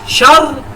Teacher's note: پہلی آواز موٹی ہوگی کیونکہ را سے پہلے والے لفظ پہ زبر ہے. دوسری رن دوسری کو رن نہیں کرنا کیونکہ را کے ساتھ زیر ہے.